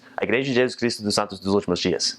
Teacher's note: there's a lot more jus and chus, and it's just a lot more slurred in Portuguese